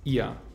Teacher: Ihr wird mit a-schwa ausgesprochen